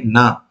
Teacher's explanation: na means my tongue tip has to go and touch the palate